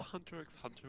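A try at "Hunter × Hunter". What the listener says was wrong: Don't say the X.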